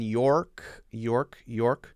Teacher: make it a little more the r in york york york you could do maybe british less strong r but at least a little more o sound o a little bit more oh oh that open sound it